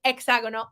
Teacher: the H in Spanish makes no sound at all. Every time you see an H, it doesn't make a sound.